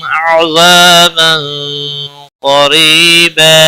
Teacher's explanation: تنوین کے بعد حروف اخفا کا قاف ہے اخفا حقیقی ہوگا. گنہ کے ساتھ پڑھیں گے.